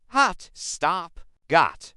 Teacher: In standard British English, it's a much more rounded sound made with the lips pushed forward.